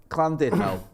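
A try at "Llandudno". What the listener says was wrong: It's not even got a C in it.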